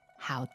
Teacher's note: what are the tones there it is third and neutral